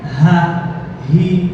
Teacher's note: আর যখন সাকিন অবস্থায় হামজা উচ্চারণ করি যখন আওতারস সাউতিয়াটা বন্ধ হয়ে যায়। হা উচ্চারণের সময় সাকিন হোক অথবা হরকতযুক্ত হোক হা, তখন ধ্বনিতন্ত্রটা খোলা থাকে